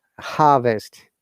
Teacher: without r is the british pronunciation